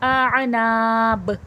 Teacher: یہاں پر وقف ہو رہا ہے تو خلخلے کی صفات واضح ہوگی یعنی کہ آواز پلٹ کر سنائی دے گی